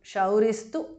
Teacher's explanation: Visarga changes to su there, tu. Shauristu, because of Sandhi.